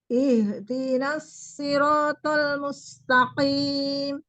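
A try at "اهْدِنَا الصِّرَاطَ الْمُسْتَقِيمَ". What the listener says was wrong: Bagus, tapi huruf shotnya masih belum berubah. Ihdinas shiratal mustaqim.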